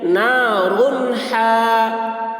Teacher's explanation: اب تنوین کے بعد را کے اوپر تنوین ہے، تنوین کے بعد حروف حلقی میں سے ہا آ رہا ہے، اس لیے تنوین کو ظاہر کر کے بلا غنہ کے جلد پڑھیں گے، اس کو اظہار کہتے ہیں۔